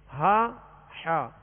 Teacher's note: یہ جو حروف دیے گئے ہیں ہا حا اور نیچے حمزہ عین اور خا غین، یہ حلق سے ادا ہوتے ہیں، حلق سے ادا ہوتے ہیں.